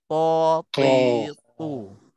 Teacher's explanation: Huruf ta pula sama juga tempat keluarnya, gigi kepala lidah juga, cuma bezanya dia nak nak tebalkan sebab ta ini termasuk huruf isti'la, huruf yang tebal, huruf itbaq, huruf tebal, maka kita muncul mulut sikitlah